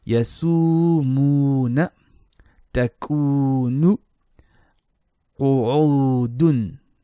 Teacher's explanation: Alif dhamma waw sukun, u, yasumuna, takunu, qu'udun. All these are stretched for 2 beats or 1 second.